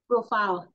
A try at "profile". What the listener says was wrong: It's about the stress. This is a noun. A noun. So the stress is usually put on the first syllable.